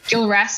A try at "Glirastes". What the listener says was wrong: But it's Glirastes because it's GLI, not GIL.